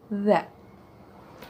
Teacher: Ketika kita mengucapkan za, ujung lidah kita akan menyentuh seri gigi atas kita.